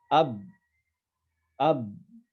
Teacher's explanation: berarti huruf ba itu makhrajnya ada di dua bibir